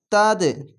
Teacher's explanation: দিয়ে তিন আলিফ স্টেন পড়লাম মাদ্দে আরজি হলো এবং এখানে কলকলা কলকলাটি ধাক্কা মেরে নিচে সাউন্ড আসবে